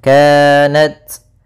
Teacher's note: Ka ada Mad thii yaitu fathah bertemu Alif kemudian Nat yaitu adanya ta sukun maka harus ada hamasnya kanat kemudian tapi sedikit saja jangan banyak jangan kanat ya enggak